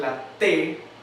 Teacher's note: algunas personas que pronuncian la tele con el ápice de la lengua en los incisivos superiores detrás de los dientes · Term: dental